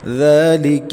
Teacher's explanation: الذال نرم حروف میں سے ہے، نرمی سے پڑھیں گے اور 1.5 الف تک کھینچیں گے، کیونکہ اس کے اوپر کھڑی حرکت میں سے کھڑی زبر ہے۔